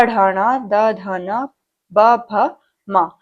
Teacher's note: इनको घोष व्यंजन भी बोलते हैं, जिनमें कंपन पैदा होता है। साथ में आपके अंतस्थ व्यंजन आ जाते हैं इसमें य र ल व, और साथ में ह जो आपका उष्म व्यंजन है वो आपका सघोष में आएगा, यानी कि कंपन पैदा होता है बोलते समय।